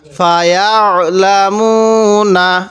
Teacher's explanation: আইনটা একটু চাপ দিয়ে পড়ব। অনেকেই আমরা এই আইনগুলোকে হামজা পড়ি।